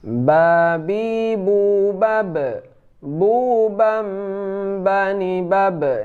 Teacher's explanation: Itu ba ini dempet antara bibir atas dan bibir bawah.